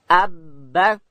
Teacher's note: با ادا کیږي د دواړو شونډانو د یو ځای کېدو څخه د لندې حصې څخه.